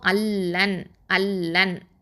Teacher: நூன் சாக்கினாக்கு அடுத்ததாக லாம் வந்துச்சுன்னா இதுகாம் பிலா குன்னா. ஓகே, இதுகாம் அதாவது காமில் பிலா குன்னா அப்படின்னு சொல்லுவோம்.